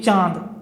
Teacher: आप बोल के देखिए चांद, तो चांद बोलोगे आप, देखो नाक से भी हवा निकलेगी, प्रेशर पड़ेगा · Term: चंद्रबिंदी